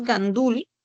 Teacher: La sílaba tónica es dul.